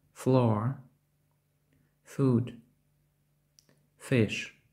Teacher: звук ф вимовляється енергійніше за український звук ф